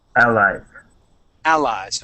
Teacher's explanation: you want to put the accent at the very beginning